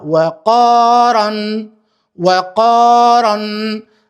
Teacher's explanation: E lexova ran sepse r-ja është një prej shkronjave të trasha